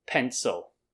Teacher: And the stress is at the beginning, pen. So the second sound becomes kind of flat, pencil. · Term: flattening out this vowel